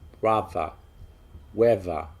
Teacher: If it's a voiced TH and it comes in the middle of a word, such as brother, weather, it's pronounced like a V sound